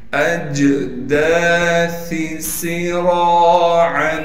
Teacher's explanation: سین کو سیٹی ادا کریں گے، را کے بعد الف مدہ ہونے کی وجہ سے را کو کھینچیں گے بھی، اور را پر زبر ہونے کی وجہ سے را کو موٹا بھی پڑھیں گے